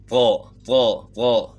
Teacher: تا کو آپ موٹا کریں گے طا ہو، اس کی آواز طا ہو جائے گی. طا زبان تالو کی طرف اٹھائیں گے تو تا کو موٹا کریں گے، طا کی آواز یعنی بن جائے گی طا طا طا.